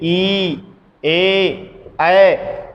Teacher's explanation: उच्चारण करने पर जिह्वा का अग्रभाग सक्रिय होता है, या उसी की मदद से इनका उच्चारण संभव हो पाता है, जिस कारण से इनको अग्र स्वर कहते हैं।